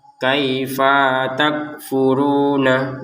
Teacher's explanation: Kaifa di sini fa langsung nyambung ke ta ya. Jangan dibaca terpisah.